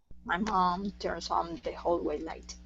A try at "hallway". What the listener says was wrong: open up nice and wide instead of whole ha ha Hall